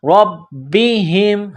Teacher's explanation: را کو با کے ساتھ پلس کرنا ہے، با میں سختی کرنی ہے